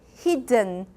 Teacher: try not to release your D you have to hold your tongue right there and then do the nasal there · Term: nasal plosion